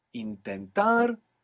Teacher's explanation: Intentar, we have the accent on the end